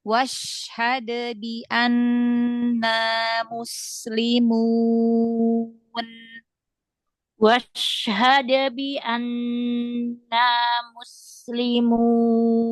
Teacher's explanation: Jadi syin itu ee harus jelas gitu ya karena dia punya tafasyi.